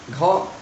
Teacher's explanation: घ बोल रहे हैं तो हमारा ज़्यादा सांस निकल रही है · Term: महाप्राण